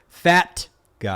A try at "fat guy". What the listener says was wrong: You gotta hit the T on that shit. Yeah, you gotta hit the T.